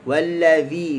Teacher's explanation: huruf zal pula hujung lidah di hujung gigi atas